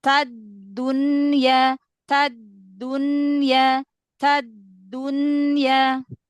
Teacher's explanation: Dal dia punya sifat syiddah tertahan suaranya tapi dia tidak terkunci Kenapa karena Dal punya sifat qqalah jadi dia masih menyisakan sifat